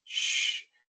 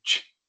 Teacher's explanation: al pronunciar la SH se sostiene un poco más el sonido. Sh. En lugar de ch, es sh.